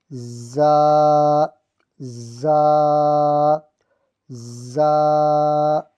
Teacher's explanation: زا کو سختی سے پڑھتے ہیں، اس میں آواز آتی ہے